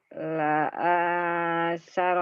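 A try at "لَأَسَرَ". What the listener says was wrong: Nggak ada yang panjang. La saro.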